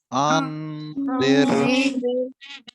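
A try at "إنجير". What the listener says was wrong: नून पे गुन्ना कर लीजिए। आंजिर।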